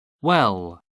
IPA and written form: wɛl (well)